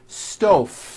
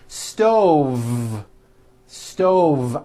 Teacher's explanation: I should have said stove stove I cook dinner on a hot stove with a voiced V